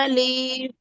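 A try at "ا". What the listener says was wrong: अलिफ को नहीं खींचना है, लाम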